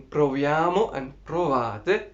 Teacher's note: so in proviamo and provate we are seeing the closed o